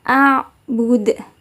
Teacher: dalnya dibaca memantul dengan pantulan yang tebal